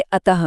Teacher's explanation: विसर्ग, जो अह होता है और ह जैसी ध्वनि देता है